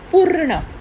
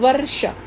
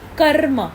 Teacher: और यहां पर र का जो उच्चारण है वह पहले होगा। र का स्वर आवाज पहले आएगी और अन्य व्यंजन की आवाज बाद में आएगी। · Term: रेफ